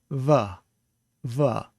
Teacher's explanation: with the fricative, you pronounce it with your bottom lip up against your teeth, va, va. So that's a fricative sound.